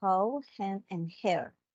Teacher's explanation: we have the H sound which is a voiceless glottal fricative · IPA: /h/